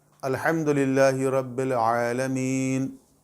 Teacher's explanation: عین کو حلق سے نکالیں، حا کو حلق سے نکالیں